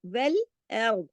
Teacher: اس میں را موٹا پڑھا جائے گا کیونکہ ار پیچھے والے سے زبر لے رہا ہے نا، اور را کنڈیشنل ہے، جب را پہ زبر ہو یا سے را سے پہلے والے حرف پر زبر ہو اس کے ساتھ مل کے پڑھا جائے تو بھی را موٹا پڑھا جائے گا.